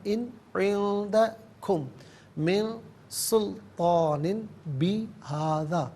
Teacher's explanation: عندکم میں کم میں میم ساکنے سے من کی میم کے ساتھ ملا کر میم کی آواز کو غننے کے ساتھ ادا کریں گے